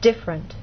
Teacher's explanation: Most Americans say this word with two vowel sounds, I and A. So in fast speech, you get different.